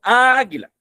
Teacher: en el caso de la palabra águila, la sílaba más fuerte es la sílaba A · Entonces, decimos chocan esas vocales, porque el sonido más fuerte se encuentra en la primera A